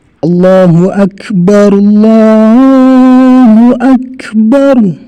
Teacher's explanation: itu ada anginnya ya, bukan hanya sekedar huruf K, itu nggak ada anginnya, tapi dia keluar angin.